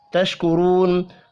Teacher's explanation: واو مدہ کو ایک الف کے برابر کھینچ کر پڑھنا ہے، را کو پیش کی وجہ سے پر پڑھیں گے.